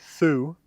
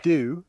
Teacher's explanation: That th would become a d, however, not a t, in a lot of low-stress common words.